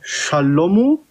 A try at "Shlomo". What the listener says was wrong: Da ist kein A, sorry. Da ist kein A, da steht Shlomo. Shlomo.